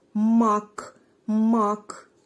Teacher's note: мак мак відчуваєте звучить твердо Отже перший звук- звук м м твердий приголосний звук позначаємо однією рисочкою вимовляємо далі ма голосний звук а